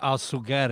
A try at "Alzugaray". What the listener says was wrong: There's an A. A-R-A-Y. Alzugaray. Yes, that's how it's supposed. technically the way. Alzugaray. Alzugaray. Yeah, but Rai is not in Spanish. In English, you got to go Ray because it's R-A-Y.